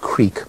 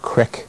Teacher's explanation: You go from E to I, as in we have the word creek, but it's often pronounced crick. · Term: sound change